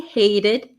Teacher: notice the T becomes a flap T